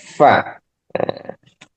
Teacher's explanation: Falfa ma'a atrafi thanaya al-musyrifa ay zahiratun wa hiya al-ulya. Jadi fa ini keluar dari tengah ya, bibir bawah ya.